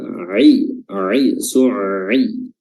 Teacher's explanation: huruf ain dia menutup pada tenggorokan bagian tengah